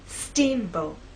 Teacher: Now, when you say the word, I want you to think about making the first part at a higher pitch. So our voice will be higher at the beginning and lower in the second part. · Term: stressed part